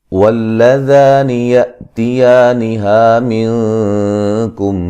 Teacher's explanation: واللذا ذا الف مدہ ہے، ذال کو نرم ادا کریں گے، یا حمزہ کو جھٹکے سے ادا کریں گے